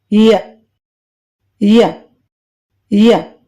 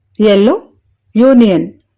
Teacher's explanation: tongue blade పంట శిఖరం వెనుకకు అంటే back of the tooth ridge ని చాలా దగ్గరగా నొక్కుతుంది ఉదాహరణకు ఎల్లో యూనియన్ తర్వాత అప్రోక్సిమేట్స్ లో నాలుగవది వ దీనిని పలికేటప్పుడు రెండు